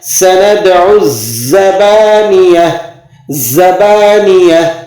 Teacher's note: سَنَدْعُ الزَّبَانِیَہ. زا پر تشدید بھی ہے، اس لیے تھوڑی سی آواز کو روک کر اور پھر آپ نے پڑھنا ہے